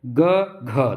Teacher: देखिए घ में देख रहे हैं कि हवा ज़्यादा निकल रही है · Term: महाप्राण